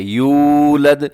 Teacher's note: واو سے پہلے پیش ہو تو واو کو لمبا کر کے پڑھا جاتا ہے، اسے واو مدہ کہتے ہیں۔